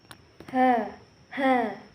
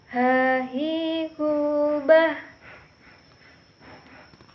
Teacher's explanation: Huruf H ini keluar dari tenggorokan yang terjauh.